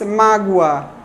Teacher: a pessoa produz o A final de maneira tensa e não frouxa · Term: hiato